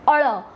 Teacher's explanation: અળ શબ્દના ઉચ્ચારણ વખતે જીભનો આગળનો ભાગ ઉપર જઈને નીચે પછડાય છે અને જે ધ્વનિ ઉત્પન્ન થાય છે તેને થડકારવાળો ધ્વનિ કહેવામાં આવે છે।